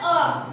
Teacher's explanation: जब आप अ का उच्चारण करेंगे तो आपको पता लगेगा कि अ मध्य से निकल रहा है, जीवा के आधार पे हो रहा है। ये ध्यान दीजिएगा, जीवा जहाँ टच करती है वहीं से इसका उच्चारण स्थान निकलता है, इसलिए बोलते हैं मध्य स्वर अ।